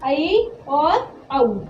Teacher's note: जिन स्वरों के उच्चारण में मुंह आधा खुले उन्हें अर्ध विवृत स्वर कहते हैं